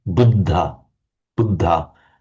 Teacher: I'll just put it from Buddha Buddha to the word that actually Buddha is just the the dental D meaning the tongue is just behind the ridge of the teeth. Da d d d d d d d d d d d d d d d d d d d d d it and then aspirated.